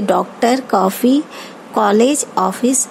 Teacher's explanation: उच्चारण आ, ओ ध्वनियों का मध्यवर्ती है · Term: आगत ध्वनि